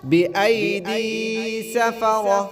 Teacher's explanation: دال کو ایک الف کی مقدار کھینچ کر پڑھیں گے